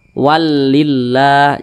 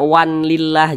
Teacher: Perhatikan di samping huruf lam termasuk kepada huruf idgham bila gunnah. Jadi cara membacanya itu dimasukkan ke huruf lam, kemudian dia tidak berdengung.